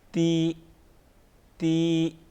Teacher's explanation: تا زیر تی، تی، اس کو موٹا نہیں پڑھیں گے